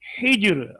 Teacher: اگر وہاں پر اس کے نیچے زیر ہے، جیسے ہجر، قسم الذی ہجر، را پہ ٹھہر گئے تو جیم بھی ساکن ہے. را پر وقف کیا، جیم بھی ساکن ہے، ہا کے نیچے زیر ہے. اب اس زیر کی وجہ سے اس را کو باریک پڑھیں گے